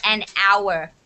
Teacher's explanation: is not a vowel but o is a vowel and because the h is silent and the phonetics of the word are sounding like a vowel